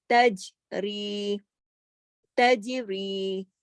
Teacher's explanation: جیم پہ ہم کلکلا بھی کریں، اور پھر را کو ہم کھینچ بھی رہے ہیں